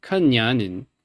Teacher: The N at the end of Ning is a bit not velar, so it sounds Kanyanin.